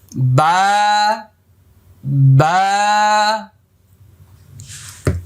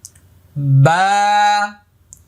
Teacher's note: বা এক আলিফ পরিমাণ লম্বা হবে, মুখটা খালি ফাঁকা হবে